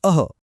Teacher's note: अ हा एक नाकातून येणारावा आवाज आहे तर विसर्ग म्हणजे अह हा श्वासासारखा आवाज आहे